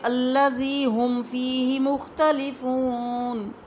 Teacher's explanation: اب دیکھیں تیسری مثال ہے میم ساکن پلس آل ادر لیٹر، کوئی اور لفظ، تو اگر میم ساکن کے بعد با نہ آئے، کوئی اور لفظ آئے، تو ہم نے اظہار کرنا ہے، اخفاء نہیں کرنا، ہم نے غنے کی طرح نہیں پڑھنا، ہم نے واضح کر کے پڑھنا ہے،